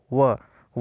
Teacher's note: वह में आपका ओष्ठ भी आ रहा है, दंत भी आ रहा है, इसलिए दंत प्लस ओष्ठ दोनों प्रकार का आपका वाक्य है।